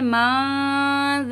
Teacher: ठीक है मेरी बहनों, मैं बहुत अच्छी तरीके से एक एक अल्फाज वाज़े करके आपको पढ़ना सिखा रही हूँ। अब यहाँ पे नून साकिन है, जाल है, इक्फा का गुन्ना करेंगे, मज़ल्लज़ी।